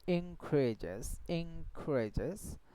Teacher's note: she says increase because after n there is a k sound then the n will be ing